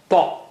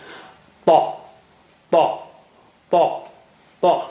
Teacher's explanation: You have to touch the tip of your tongue to the upper gum.